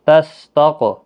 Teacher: قاف حروف مستعلیہ بھی ہے، پر بھی پڑھنا ہے اور اس پر قلقلہ بھی ہوگا، حروف قلقلہ میں سے ہے.